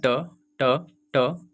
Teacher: जब आपका जुबान मुड़ कर टच करे तालु से तो उसे करते हैं मूर्धा